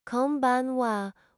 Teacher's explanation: Pronounce it konbanwa with equal emphasis on each syllable.